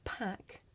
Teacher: this is a voiceless sound you can hear it at the beginning of the words pack and pan · They are non-continuants. Our first plosive or stop in English is bilabial p. This is a voiceless sound.